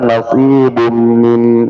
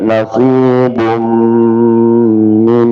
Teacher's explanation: nasibun tanwin bertemu dengan min idgham di gunnah ya, maka gunnahnya 2 harakat